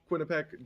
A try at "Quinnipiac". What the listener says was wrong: Quinnipiac. Missing an eye at the end. There's 3 eyes.